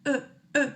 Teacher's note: Y en vez de decir o, decimos e, pero con la boca en o. Entonces hago e y ese es el sonido.